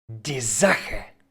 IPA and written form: diː ˈza.xə (die Sache)